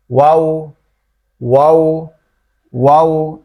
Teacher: ওয়াও হচ্ছে আমাদের দুই ঠোঁট গোল করে উচ্চারিত হবে, দুই ঠোঁট এরকম গোল করে, একবারে গোল করে উচ্চারিত হবে।